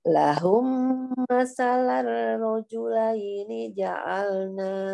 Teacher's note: Masalah rojulaini, rohnya ditebalkan.